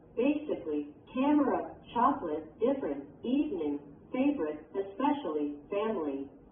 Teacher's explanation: The vowel sound of an unstressed syllable can also be dropped in some words. This means the word loses a syllable. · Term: dropped syllable